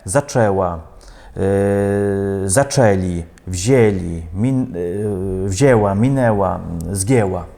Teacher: Ми вимовляємо як «о», «зачав», «взяв», «мінув», «згів». А носове «ен» змінюється в «е».